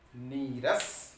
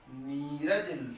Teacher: विसर्ग के बाद र आए तो विसर्ग का लोप हो गया, विसर्ग का लोप हुआ, और जो पहले जो स्वर है उसका दीर्घ हो जाना